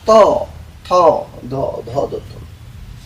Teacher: দাত আর যেহবার সংযোগ থেকে উচ্চারিত হয় তথ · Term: দন্ত বর্ণ